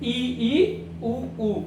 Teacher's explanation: ई ई उ ऊ संवृत स्वर होते हैं। इनका झुकाव ऊपर वाले जबड़े की तरफ होता है। तो ये जीभ ऊपर वाले जबड़े की ओर जाती है।